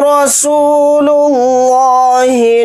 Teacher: रा के ऊपर ज़बर है, रा को वहाँ पर मोटा यानी पुर पढ़ेंगे। सीन के साथ वाव मद्दा है, सीन वाव पेश सू को थोड़ा खींच कर पढ़ेंगे।